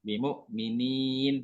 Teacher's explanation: Bimu'minin, tidak boleh dengung, tidak boleh ada. Jadi mat ya-nya, kasroh panjangnya itu tidak boleh bergetar hidungnya.